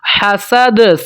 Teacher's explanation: سین کو سیٹی کے ساتھ پڑھیں گے، دال کے اوپر قلقلہ ہوگا